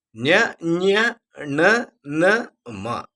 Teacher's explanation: ಅಂತ ಕರೀತೀವಿ ನಾಸಿಕ ಅಂದ್ರೆ ಮೂಗು ಮೂಗಿನಿಂದ ಉಚ್ಚರಿಸಲ್ಪಡುವಂತಹ ಅಕ್ಷರಗಳು ಈ ವರ್ಣಗಳು ಇದಾವಲ್ಲ ಮೂಗನ್ನ ಬಿಗೆಯಾಗಿ ಹಿಡಿದು ಉಚ್ಚರಿಸಲಿಕ್ಕೆ ಹೋದರೆ ಅದು ಉಚ್ಚಾರ ಆಗೋದೇ ಇಲ್ಲ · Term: ಅನುನಾಸಿಕಗಳು